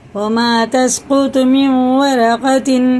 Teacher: وَمَا تَسْقُطُ مِنْ وَرَقَةٍ، ادغام نون ہے، واو ہے، نون ساکن کے بعد واو پہ شد ہے تو ادغام ہوگا